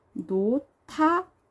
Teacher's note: 히읗과 디귿이 만났어요. 그럼 자음 축약이 일어나죠. 자음 축약이 일어나면은 티귿으로 바뀔 거예요. 노타 이렇게 자음 축약이 일어났어요.